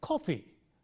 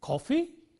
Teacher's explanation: I said, coffee, with a falling tone, coffee. And he said, coffee, with a rising tone, coffee. He's asking me a question, is it coffee that you want?